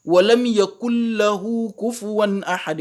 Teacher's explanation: Je dois faire idgham sans ghunna. Donc, je passe directement de la lettre kaf à la lettre lam. Comme si le nun n'existait pas, parce que là, le nun disparaît le nun disparaît carrément dans la lecture.